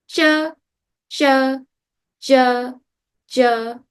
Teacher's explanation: The tongue is by the teeth and the front of the tongue is flatish.